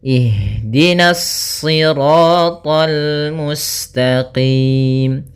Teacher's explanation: karena kita bertemu dengan huruf lam maka dia lamnya tipis, jangan ikut tebal